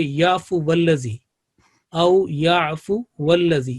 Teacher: वाव के लाम के साथ मिलाएंगे, दरमियान में जितने भी हरूफ होंगे, 1 है, 2 है, 3 है, 4 है, वो सारे जो हैं वो ड्रॉप हो जाएंगे , ख़त्म हो जाएंगे, और हम इसको जो मुतहर्रिक एक हर्फ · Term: वसल का जो उसूल